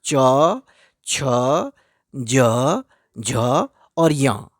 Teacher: सब के अंत में आपको अ की ध्वनि सुनाई देगी। क में भी अ है।